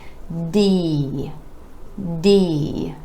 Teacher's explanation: that sound a little longer give it a little stretch and start first with the tongue up behind the teeth to the alveolar Ridge for the done sound